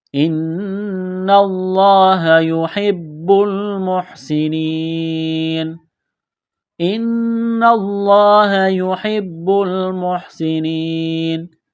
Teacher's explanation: نون مشدد پر غنہ کریں گے، آواز ناک میں چھپائیں گے